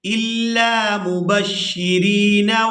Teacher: را کو یا مدہ کی وجہ سے کھینچ کر ادا کریں گے